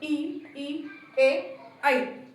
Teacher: बोलताना काय फक्त पुढच्या जीभेच्या जास्त करून उपयोग त्याठिकाणी होतो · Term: अग्रस्वर